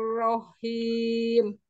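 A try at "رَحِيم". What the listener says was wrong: Itu masih ada sedikit tasdidnya. Tasdidnya sudah bagus. Kalau rahimnya tidak bertasdid, tapi haknya dia dari pangkal tenggorokan. Kalau haknya dia dari tengah tenggorokan, dia ada bertasdid gitu. Jadi enggak, sebetulnya tidak ada tasdid. Haknya tetap dari tengah tenggorokan. Rahim, rahim.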